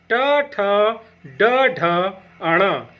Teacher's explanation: इनका उच्चारण स्थान मूर्धा होता है। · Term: ट वर्ग